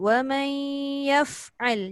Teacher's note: Fa jangan dihirikkan, jangan ya fa'al. Fa mati.